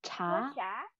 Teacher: ch bật hơi ra nhá mọi người